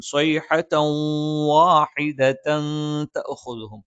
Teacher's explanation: തൻവീനിനെ ശേഷമുള്ള വാവിലേക്ക് ചേർത്ത് വായിക്കുകയും മണിക്കുകയും ചെയ്യും. സ്വൈഹതൻ വാഹിദതൻ തഅഖുദുഹും. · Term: ഇദ്ഗാമും ബിഗുന്നയാണ്